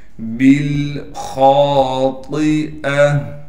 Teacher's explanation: بالخاطئہ، با کو لام سے ملا دیں گے، با کے بعد الف ہے لیکن یہ الف نہیں پڑھی جائے گی اس لیے کہ ہم نے با کو لام سے ملا دیا۔ خا کو موٹا کر کے پڑھیں گے